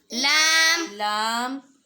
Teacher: زبان کا کنارہ اور اوپر والے دو دانتوں کے مسوڑے ان سے ادا ہوگا لام